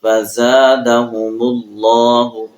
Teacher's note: زا کو سیٹی کے ساتھ پڑھیں گے